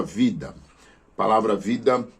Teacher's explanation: na palavra vida palavra vida nós temos a sílaba tônica vi